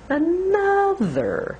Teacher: Which is the long syllable? Well, for Americans, it's the second one. Another. Breathe and speak from the diaphragm using the band and really make that second syllable longer.